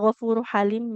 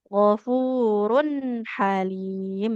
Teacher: ini harakat ganda atau tanwin ya nah maka harus ada bunyi nun sukunnya gfurun halim seperti itu. · Sama ini ghafurun halim ada tanwinnya Ibu, nggak boleh ghafuru halim ya. Ini harokat ganda atau tanwin ya. Nah, maka harus ada bunyi nun sukunnya.